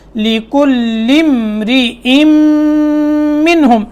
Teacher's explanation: لام کو میم سے ملانا ہے، میم ساکن ہے